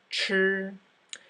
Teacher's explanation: The CH sound sounds like a CH sound in English, but the tongue is curled back further.